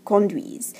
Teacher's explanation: You pronounce that S like a Z sound